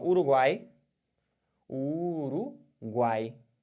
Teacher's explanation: no nariz porque porque você não tem nenhum som nasal aqui o som de três vogais faladas pela boca apenas tritongo oral